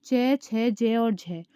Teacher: जो ये हमारे बीच वाले हैं तालु में च, छ, ज और झ, ये होते हैं हमारे स्पर्श संघर्षी व्यंजन